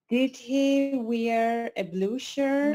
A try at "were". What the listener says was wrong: the pronunciation is were, not wear. Were.